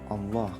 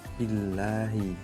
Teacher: bedakan Allah itu tebal, kemudian billahi lafaz Allah dibaca tipis atau tarqiq